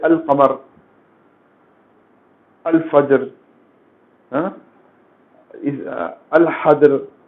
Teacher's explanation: ایسے حروف جن سے پہلے ال لکھا جاتا ہے، لام کا وہاں پر اظہار ہوتا ہے یعنی لام ظاہر ہوتا ہے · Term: قمری حروف